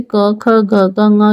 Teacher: ये कंठ से उच्चारित होते हैं तो इनको कंठ व्यंजन भी बोलते हैं।